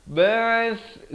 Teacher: Walaqad ba'ath, sa di hujung lidah. Ba'ath, hujung tu keluar. Kalau ba'as jadi huruf sin, di sini huruf sa.